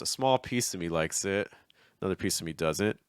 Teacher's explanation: So he's a little slower on the first two thought groups.